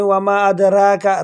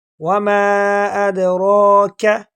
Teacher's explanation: وَمَا أَدْرَاكَ، بعض لوگ مسٹیک کرتے ہیں، را کو باریک پڑھ لیتے ہیں، وَمَا أَدْرَاكَ، را کا وَمَا أَدْرَاكَ، اور بعض لوگ ایسے بھی پڑھ لے وَمَا أَدْرَاقَ، آخری کاف کو موڑ، بلکہ آخری کاف باریک ہے اور را کو موٹا کر کے پر کر کے پڑھیں گے